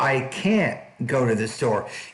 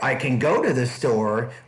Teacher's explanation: if you put stress on the modal that means it's negative if you don't put stress on and put more stress in the main verb it means it's positive